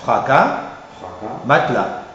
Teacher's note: as ou le s final n'est pas prononcé